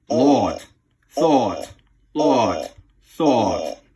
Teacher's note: Eastern New England is a little more open, a little more throaty.